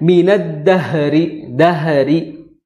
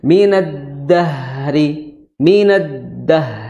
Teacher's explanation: jangan diqolqolahkan tapi dialirkan saja suaranya